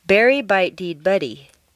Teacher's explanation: denasalizing your voice for a moment, which means turning the nasals into the other consonants